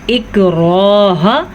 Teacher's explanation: इक्राह हमज़ा को नरमी से पढ़ेंगे क्योंकि ये हमज़ा है, आइन नहीं।